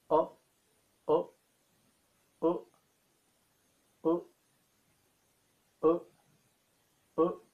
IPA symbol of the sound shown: o